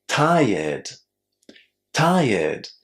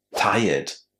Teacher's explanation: This is a general rule for all the regular verbs that end in r e d. You simply add the d without any extra syllables.